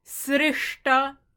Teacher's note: That is a cerebral ta because there's a cerebral sha. There's a cerebral sha because a palatal can be reduced to dental ta or cerebral ta.